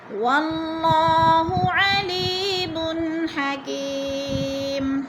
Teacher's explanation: علیم حکیم، اب حکی پہ پھر یا مدہ ہے یا ساکن سے پہلے کاف کے نیچے زیر ہے تو یا مدہ، یا مدہ کو ایک الف دو حرکات کے برابر ہم نے لمبا کر کے پڑھنا ہے، اور دو پیش تنوین کو وقف کی صورت میں ساکن کر کے پڑھیں گے